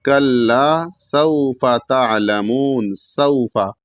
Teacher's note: سین کو سیٹی کے آواز کی طرح ادا کریں گے اور سین کے بعد واو ساکن ہے تو ایک الف کے برابر کھینچ کے پڑھیں گے. · کلا چھوٹا کاف ہے اور لام مشدد ہے، اس لام کے بعد الف ہے تو ایک الف کے برابر کھینچیں گے